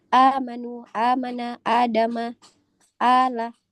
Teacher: mad badal itu apabila ada hamzah yang dibaca panjang. Itu namanya mad badal. Dibaca panjang dua harakat saja.